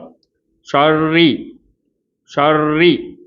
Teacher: ஷர்ரி அப்படின்னு ரா கஸ்ரா வச்சு சொல்லணும். ஆனால் வைப்ரேஷன் இல்லாமல் சொல்லணும்.